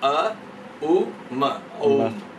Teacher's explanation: A plus U becomes O.